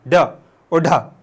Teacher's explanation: ड बोलोगे तुम्हारी जुबान ऊपर जाएगी। जुबान का अगला हिस्सा ऊपर जाएगा वो वापस थट से नीचे आएगा। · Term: उत्क्षिप्त